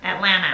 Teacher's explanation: she doesn't even pronounce the t